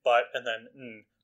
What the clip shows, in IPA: bʌt.n